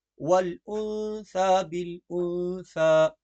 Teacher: یہاں پر سا پڑھی جائے گی نہ سین بالکل نہیں پڑھیں گے ہم اس کو